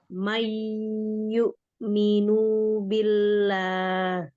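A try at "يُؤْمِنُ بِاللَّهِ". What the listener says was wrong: Nunya masih dibaca panjang, pendek itu.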